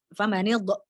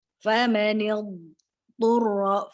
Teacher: karena dot bukan qalqalah maka jangan dipantulkan